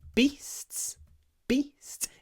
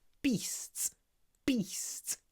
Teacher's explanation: it's short the e is short because it comes before an unvoiced sound